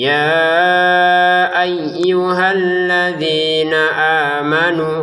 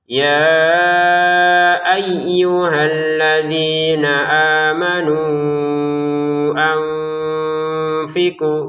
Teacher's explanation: Kalau berhenti dua harakat panjangnya. Kalau disambung lima harakat.